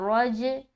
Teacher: रा को मोटा और जीम से मिलाते हुए कलकला कर रहे हैं। हमने यहाँ पर क्यों कलकला किया, क्योंकि हमें मालूम है कि ये जीम हर्फ हरूफ कलकला में से है, तभी हमने किया।